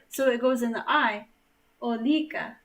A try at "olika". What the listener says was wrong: No, wait. No, it's on the O. Olika. But there's a little bit of emphasis on the I as well, just because because it's lika.